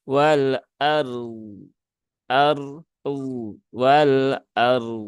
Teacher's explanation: Walah kalau sambung menjadi Wal Ar Wal ARD nah seperti itu tidak perlu di belakang ditambahi dengan D Ya enggak perlu karena tidak ada qalqalahnya